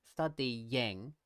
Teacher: Study ends with a vowel, the vowel E, but the vowel E itself ends with a tongue position that's the same as we use for y. So when I go study and then I go into the ing, studying, it sounds like there's a y sound.